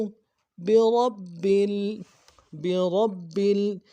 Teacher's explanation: برب میں جو راہ ہے، راہ کو موٹا کرنا ہے، با کے اوپر تشدید ہے، تشدید کے اوپر زور دینا ہے۔